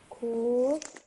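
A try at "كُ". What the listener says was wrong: Okay, this is a kaf with a dhamma on top of it, and dhamma should only be pronounced for 1 second. Okay, just make sure you don't stretch it for longer than it's needed. This is a kaf with a dhamma, ku.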